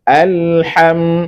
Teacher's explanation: ha pastikan keluar dari tengah tenggorokan